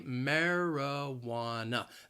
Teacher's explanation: the word has four syllables and the stress is on that third syllable · that second and fourth syllable you hear that schwa